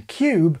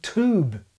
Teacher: American English has extended this yod dropping after alveolar consonants. Most Americans preserve the yod in cube, but drop it in tube.